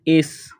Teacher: یا بنی اسرائیل، حمزہ کو سین کے ساتھ پلس کرنا ہے، سین میں سیٹی کی آواز پیدا کریں گے، سین کو باریک کرنا ہے